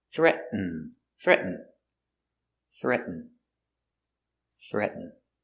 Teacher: So you make the position of the T, but you don't make the T sound. The tongue goes up. Threat. And it falls to an N.